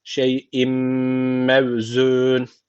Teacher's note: Tenvinden sonra mim gelmiş. O zaman burada idgam meal güne var. Guneli bir şekilde bağlıyoruz.